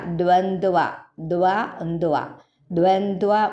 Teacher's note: ദ്വായും കേൾക്കണം ദ്വായും കേൾക്കണം ദ്വന്ത എന്നല്ല ദ്വന്ത്വ